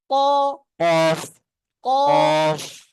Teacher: অফ বুঝুন, প্রথম কথা বুঝুন, জিহ্বার গোড়া, জিহ্বার কি একদম গোড়া জিহ্বাটা যেখান থেকে শুরু হয়েছে জিহ্বার গোড়া তার বরাবর উপরের তালু, কি তালু, তালু তালুর সঙ্গে জিহ্বাটাকে মিলিয়ে উচ্চারণটা করতে হবে। যে উচ্চারণটা আসবে সেটাই হচ্ছে 2 নোক্তাওয়ালা কফ।